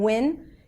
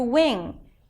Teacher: For the N, the tip of the tongue goes up. For the NG, the back of the tongue goes up in the back